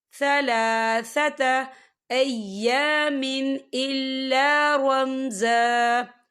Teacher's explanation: وقف کی صورت میں 1 زبر پڑھا جائے گا، 2 زبر نہیں پڑھے جائیں گے